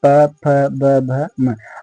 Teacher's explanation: और प जो आपका होता है वो कहां से निकलता है? ओष्ठ से।